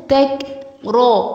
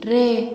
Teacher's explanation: اولا دي تاء مش طاء، ثانيا الكاف هنا هنهمس فيها، يعني ايه نهمس؟ يعني هنخرج هواء بسيط جدا من الفم